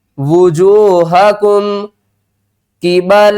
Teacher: میم ساکن کے بعد آگے قاف آ رہا ہے تو یہاں پر ہم میم کی آواز کو ظاہر کر کے پڑھیں گے